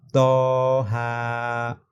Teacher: یہاں پر تو اور ہا دونوں کو ہم 1 الف کی مقدار کھینچ کر پڑھیں گے